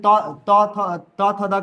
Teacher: त थ त थ द का उच्चारण करते हो दांत से करते हो